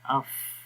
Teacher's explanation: فا کے ادا کرتے وقت سانس تھوڑا سا جاری رہتا ہے، سانس جیسے اگر آپ کو آواز آ رہی ہے اف، ٹھیک ہے۔